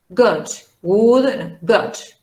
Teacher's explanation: And then you have the U sound. This U sound is a short U, okay? It's a rounded sound